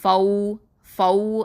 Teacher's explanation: ஃபௌ அப்படின்னு சொல்லும்போது வாயை வந்து குவிங்க, இது வந்து வாவுல் லீனு